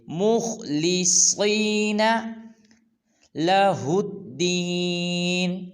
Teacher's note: دال کو لام مشدد کے ساتھ ملائیں گے اور لام کو پر ادا کریں گے، جن کے موٹا ادا کریں گے، جیسے لِيَعْبُدُوا اللَّهَ مُخْلِصِينَ۔ اس کی خا اور صاد کو پر ادا کریں گے